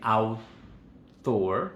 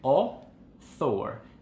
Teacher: no se dice el diptongo, sino que se dice un solo sonido, que es O. Entonces la AU no suena AU, sino que suena O, igualito que en el francés.